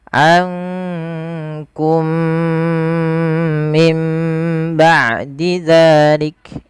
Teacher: Maka di sini diwarnai dengan warna hijau, menandakan dia huruf mim yang pertama dimasukkan kepada mim yang kedua dan ditahan dengan 2 harokat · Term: idgham mimi